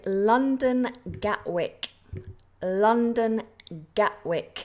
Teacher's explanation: Now, I don't pronounce the T, and I don't think many natives do pronounce the T.